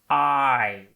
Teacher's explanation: the i is formed by an ah and an e coming together quickly